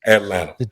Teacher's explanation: when I say Atlanta if you listen real close the t's sound like D's